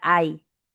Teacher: Ah, pero la Y al final de una sílaba suena como vocal. La Y al final de una sílaba suena como vocal, suena como la I. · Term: diptongo decreciente